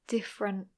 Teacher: I would say different without the T at the end